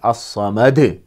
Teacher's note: جب رکیں گے تو دال میں قلقلہ ہوگا، آواز ٹکر کھا کے الگ ہوگی، الصمد۔ اور کچھ حضرات اسے بھی کچھ بگاڑ کر پڑھتے ہیں، تو صحیح تلفظ ہے اللہ الصمد۔